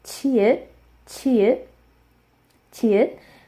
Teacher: It's like saying the ch sound, but you want to really, really get that puff of air at the back of it. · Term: aspirated consonant